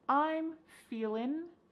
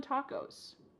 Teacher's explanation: I'm feeling, cutting off that G